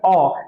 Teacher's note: पहले आते हैं कंठ, कंठ से हमारा उच्चारण होता है, जो शब्द हमारे कंठ से निकलता है, ठीक है, कंठय वर्ण उसे क्या कहते हैं, कंठय वर्ण, जो हमारे कंठ से निकलता है